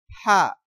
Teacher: কণ্ঠনালীর মাঝখান থেকে গরম বাতাসের সাহায্যে উচ্চারিত হবে